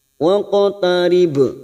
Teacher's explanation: Huwas jude dal sukun qalqalah sugro yang mati asli di tengah kalimat kita pantulkan jude waqo, lalu ada huruf qaf sukun qalqalah sugro. Waqtarib ba sukun kita pantulkan qalqalah kubro yang mati di akhir kalimat